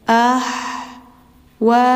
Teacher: Ini mad wajib muttasil lima harakat panjangnya.